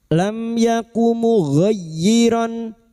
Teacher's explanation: mim sukun bertemu Ya idhar syafawi bertemunya mim sukun dengan huruf hijaiyah selain mim dan ba. Mim sukun dibaca jelas tanpa mendengung.